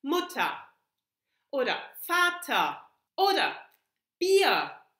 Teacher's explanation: the R is just a reduced A sound